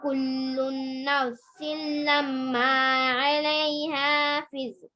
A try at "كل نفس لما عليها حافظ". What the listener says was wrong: پہلے آپ صحیح پڑھے تھے, اخفا کرنا تھا نا, کاف آئے تو نون ساکن کے بعد. كل نفس لما عليها حافظ.